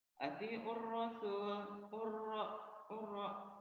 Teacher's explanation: Alif lamnya tidak jelas, yang dibacanya huruf berikutnya. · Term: samsiah